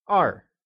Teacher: Two is Èr and is pronounced with a falling tone